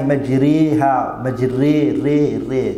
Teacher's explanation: That is called Imala. So you don't say as a fatha nor a kasra. It's a way in between.